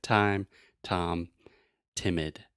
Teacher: to produce the true T sound we're using the tip of our tongue that means the little part and I'm pointing to the part